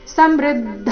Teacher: ಸ ಮೇಲೆ ಆಘಾತ ಬರಕೂಡದು ಮೃ ಮೇಲೆ ಆಘಾತ ಬರಬೇಕು